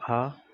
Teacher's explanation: इसके उच्चारण में वायु केवल मुख से निकलती है। ठीक है, यहाँ पे आपसे नाक से नहीं निकलेगी, तो आप इसको ऐसे याद रख सकते हैं कि निरानुनासिक, क्योंकि निरानुनासिक नाक से नहीं निकलता।